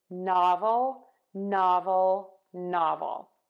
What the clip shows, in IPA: ˈnɑvəl